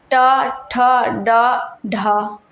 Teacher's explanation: ट वर्ग का जो है मूर्धा से होता है।